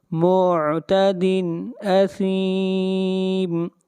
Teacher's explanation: تنوین کو ظاہر کر کے پڑھیں گے، یہاں پر اظہار ہوگا، اس لیے کہ تنوین کے بعد اگلا حرف حمزہ ہے، اور حمزہ حروف حلقی میں سے ہے۔